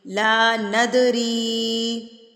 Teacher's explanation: ند پہ قلقلہ کریں گے، اس کو آپ ہلا کے تھرتھراہٹ سے پڑھیں گے